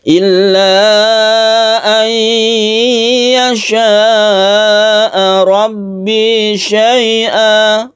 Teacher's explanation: roknya ini kita baca tebal karena roknya itu berfathah. Setiap rok yang berfathah itu dibaca tebal atau tafkhim.